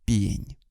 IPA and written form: pʲenʲ (пень)